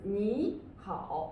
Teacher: we would prefer to use the 2-3 combination instead of 3-3 combination